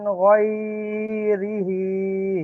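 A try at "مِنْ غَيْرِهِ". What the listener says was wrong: গয়টাকে ধরছেন কেন তো? এটা তো ইয়ালিন, ইয়ালিনের পরে নরম আওয়াজে তাড়াতাড়ি পড়তে হয় না জি? মিন গয়রিহি।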